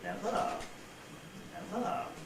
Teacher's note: the nucleus itself is more or less level at a mid to low pitch, and then the single tail syllable actually falls